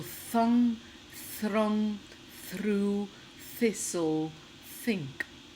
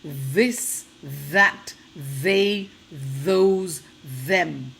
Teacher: One is unvoiced and one is voiced. One has vibrations and one has only air.